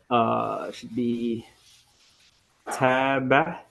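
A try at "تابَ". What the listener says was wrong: Try not to add that Taba. Right? There's no ha. It's just Taba. So the pronunciation of these letters is nice, but you're adding an extra ha.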